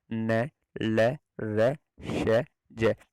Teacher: वर्तस्य, वर्तस्य मतलब दांतों के ऊपर का जो मसूड़ा होता है। इन व्यंजनों के उच्चारण में दांतों का अंदर का मसूड़ा छुआ जाता है